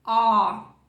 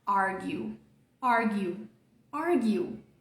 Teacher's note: A letra A do português não é esse símbolo aqui. Esse símbolo representa um som que está entre o A e o O. Você vai meio que fazer o som de O, só que abrir bastante a boca.